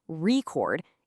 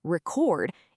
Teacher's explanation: If you put the stress on the first part record, it's a noun like a vinyl record. But if you shift the stress to the second part, record, it becomes a verb, like to record a video. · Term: word stress